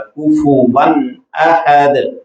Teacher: غنہ نہیں کریں گے بلکہ ظاہر کر کے پڑھا جائے گا